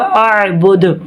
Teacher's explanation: हमज़ा को जमाओं के साथ पढ़ेंगे, आइन में साउंड रुकेगा, दाल पर वफ़ करेंगे तो जज़म आ जाएगी और यहाँ पर कलकला होगा